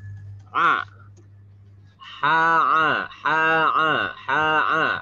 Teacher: Wastul halqi, murni di tengah tenggorokan. Ha, jangan masukkan ke hidung atau al-khayshum, bukan ha, bukan ya, tapi ha, murni dari tenggorokan.